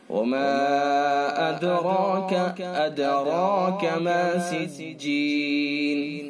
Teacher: دال ساکن ہے، دال حروف قلقلہ میں سے لہذا دال کے اندر قلقلہ ہوگا ، را پر پڑھا جائے گا چونکہ را کے اوپر زبر